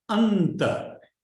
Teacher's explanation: Your tongue will also go to the teeth to pronounce the anta. So ta will come from the teeth, and the N will also come from the teeth.